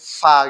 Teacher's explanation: ada di antara gigi atas dan bibir bawah